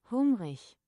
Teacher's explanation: The final IG is not a hard G. It's a soft ich sound. · Word final IG, soft ich sound. In Standard German, a word ending in IG is pronounced ich. That breathy, hissy sound from the start of the English huge.